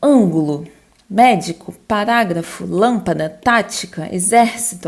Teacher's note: a sílaba tônica dela está na antepenúltima sílaba, tá? Na separação silábica, a antepenúltima é a sílaba mais forte. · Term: proparoxítonas